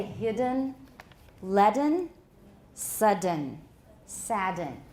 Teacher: it's a mark of a foreign accent to pronounce that vowel that schwa between the d and the n